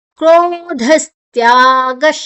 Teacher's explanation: ಧ ಮಹಾಪ್ರಾಣ ನಂತರ ವಿಸರ್ಗದ ಉಚ್ಚಾರಣೆ ಸ್, ಮುಂದಿನ ಅಕ್ಷರ ತ್ಯಾ ಇದೆ